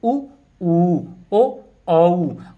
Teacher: इनका उच्चारण कर रहे हैं हम तब हम महसूस कर पा रहे हैं कि हमारे जो होठ हैं वे गोल हो रहे हैं इसलिए यह वृत्ताकार या वृत्त मुखी स्वर · होठ गोल हो जाते हैं या वृत की तरह से हो जाते हैं · उच्चारण करने पर ओष्ठों का आकार गोल हो जाता है, वे वृत्ताकार या वृत्तमुखी स्वर कहलाते हैं